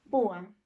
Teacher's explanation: vocal abierta más vocal cerrada, ¿cierto? Pero la mayor fuerza de voz recae en la vocal cerrada. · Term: hiato